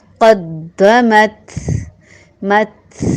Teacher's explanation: قدمت مت ہلکی سی آپ کو آواز محسوس ہوگی، وہ ہمس کی آواز ہے · ہلکی سی آواز تھا کی طرح آئے گی اور کلکلا نہیں ہوگا، موٹا بھی نہیں ہے، یہ نرم حروف میں سے ہے، آرام سے ادا ہوگا.